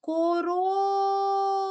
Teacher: де найгучніше ми з вами говорили це слово всередині тобто другий склад у нас наголошений